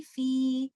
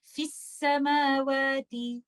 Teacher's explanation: فی، لیکن جب میں ان دونوں کو ملا دوں گی تو میں مد لیٹر کو ڈراپ کر دوں گی اور فا کو سین سے ملا دوں گی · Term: اتقاء الساکنین